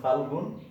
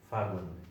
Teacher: এখানে গ ছিল, ল ছিল, লটা চলে গেছে, মানে পদের মধ্যে এই ব্যঞ্জন লোপ বা অন্তর্হতি। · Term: মধ্য ব্যঞ্জন লোপ